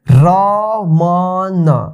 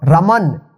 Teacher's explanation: रमन last में अ की sound नहीं आ रहा है